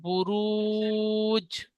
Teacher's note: জিমের উপরে সাকিন এসেছে হরফে কলকলা পাঁচটি অক্ষরের মধ্যে একটি অক্ষর জিম তাই জিমকে কলকলা করে ডানদিকে অক্ষরের সাথে মিলিয়ে পড়তে হবে